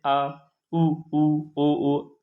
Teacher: इनका उच्चारण करने पर हमें जो कंपन होगा वह जीभ के पिछले हिस्से से होगा · इसी प्रकार पश्च स्वर की बात करें तो जो स्वर जीभ के पश्च भाग में बोले जाते हैं वे आपके पश्च स्वर कहलाते हैं, जैसे आ, उ, ओ। दोस्तों इनका उच्चारण करने पर हमें जो कंपन होगा वो जीभ के पिछले हिस्से से होगा, तो इसलिए इसे क्या कहेंगे, पश्च स्वर कहेंगे।